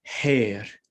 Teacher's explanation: so here we go so our th sound there is a is a lenited t so that sounds like an h so instead of tear we'd say hair right so that line